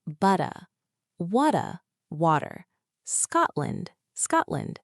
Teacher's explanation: If you hear a sudden silence in the middle of a word, it's probably a glottle stop t. · It is when the T is replaced by a stoppage of air in the throat, like the sound in the middle of uh-oh. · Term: glottal stop